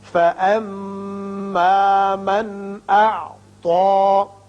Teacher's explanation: میم مشدد ہے، غنہ کریں گے. یہاں نون ساکن کے بعد حمزہ بشکل الف ہے، اظہار حلقی ہوگا.